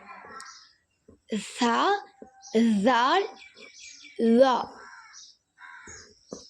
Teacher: நாவின் நுனிப்பகுதி மேல் பற்களின் நுனியில் படும் பொழுது வெளியாகிறது